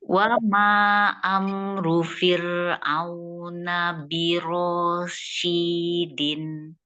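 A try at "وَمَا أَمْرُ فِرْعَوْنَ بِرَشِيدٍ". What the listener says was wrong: Ro-nya panjang apa enggak? Iya, ma-nya kurang ya. Ma-nya tambahin jadi 4 harokat ya, ma-nya ya. Wa ma amru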